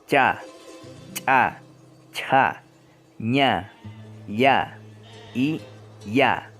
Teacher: el articulador es la región inmediata después de la punta de la lengua y el punto de articulación es la zona palatal. También se puede notar que toca la región del paladar. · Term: Consonantes palatales